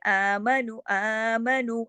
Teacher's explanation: اس میں آ جو ہے 2 حرکات کھینچا